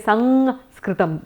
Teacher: in Bengal you've got it very clearly as Sanskritam, because we make everything in Bengal into the ang. The anuswara is always the ang.